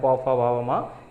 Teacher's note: ये आपके ओष्ठ को टच करता है। दोनों ओष्ठ मिल जाते हैं आपस में बोलते वक्त, इसीलिए हम इसको ओष्ठ व्यंजन का नाम देते हैं।